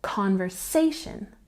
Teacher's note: with conversation we have a secondary stress on the first syllable